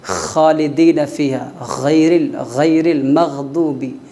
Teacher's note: غین اور خا، ان کا مخرج ابتدائی حلق ہے، منہ کی طرف والا حصہ ہے۔